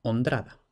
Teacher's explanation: meter entre medio una d para facilitar